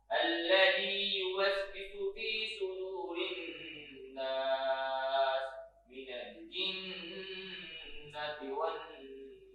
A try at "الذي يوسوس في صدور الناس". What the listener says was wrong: الذي يوسوس فی، صاد کو تھوڑا سا اور پر کریں، یوسوس فی،